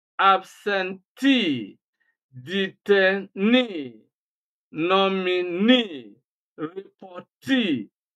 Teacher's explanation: Words that end in EE, three syllables or more, especially nouns with EE, which gives you the long E sound, E, they are always stressed on the first syllable from the end. That is, you stress on the last syllable